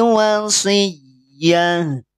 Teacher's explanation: Wasiyatin ketika wakof berubah jadi sukun. Tak marbutoh ketika sukun dibacanya ha. Tidak dibaca wasiat.